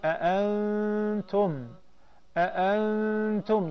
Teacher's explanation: You will tend to hide and conceal the noon and replace it with the غنّة. Two counts. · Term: ikhfa